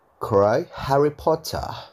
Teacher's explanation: R di British itu hanya dibaca ketika setelah R ada suara vokal